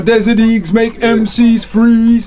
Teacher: all the vowel sounds are drawn out, and that's an American accent in general